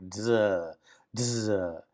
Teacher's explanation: It's the sound of zeta, and it's a DZ, like dzz, dzz. It has that kind of a, not just a straight Z, but a D with it. So it blends together